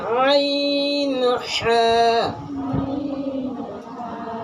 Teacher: হলকের মধ্যখান হইতে আইন হা